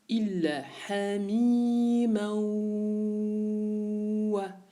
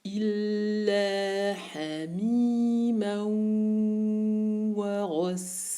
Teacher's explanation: En attendant le passage, le temps du son nasal, j'arrondis mes lèvres et je suis sur le point de sortie du waw.